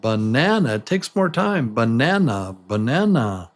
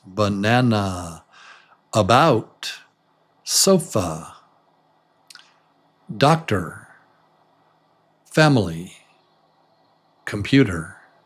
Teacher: So this the stressed vowel is little longer than the others, right? Banana. Banana. It takes more time.